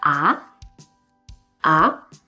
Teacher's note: In this case, it is the second rising tone.